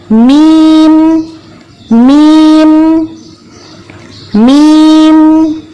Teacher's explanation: اس کے لیے ہمیں کوئی ناک پر زور نہیں دینا پڑا. جب ہم نے دونوں ہونٹوں کو میم کی آواز کے لیے بند کیا تو خود بخود ناک سے آواز باہر آ گئی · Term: غنہ